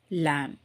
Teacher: லேம்ன்றதில் பியை உச்சரிக்க மாட்டோம். லேம் அப்படி தான் சொல்லுவோம்.